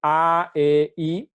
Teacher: yo digo A, E, I, mi boca se va cerrando, ¿no? Conforme cambio de A, E o a I.